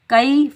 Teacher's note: کاف کے اوپر زبر، کاف کو ہم یائے ساکن سے ملائیں گے۔ یائے ساکن سے پہلے کاف کے اوپر زبر ہے تو یہ یائے لین ہے، اس کو ہم نرمی اور جلدی سے ادا کریں گے · کاف کے اوپر زبر، یہ باریک کاف ہے، اس کو ہم موٹا نہیں پڑھیں گے۔ کاف کے اوپر زبر، کاف کو ہم یائے ساکن سے ملائیں گے۔